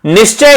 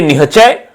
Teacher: तालव्य स के स्थान पर ह का प्रयोग किया जाता है।